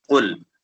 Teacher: اعوذ باللہ من الشیطان الرجیم بسم اللہ الرحمن الرحیم قل اعوذ قاف حرف مستعالیہ میں سے آپ نے پڑھا ہے قل، قاف کو پر پڑھیں گے یعنی موٹا کر کے پڑھیں گے